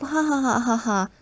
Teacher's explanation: you find nasality in posed laughter, the kind of ha ha ha ha ha sounds